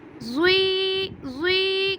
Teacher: زوی کو میں نے ایک الف کے برابر لمبا کیا کیونکہ یا کے اوپر جزم ہے۔ اب اسے پڑھیں گے یا ساکن، یا ساکن ہے اور اس سے پیچھے والے حرف پہ زیر ہے تو اسے یا مدہ کہتے ہیں اور اسے ایک الف کے برابر لمبا کرتے ہیں۔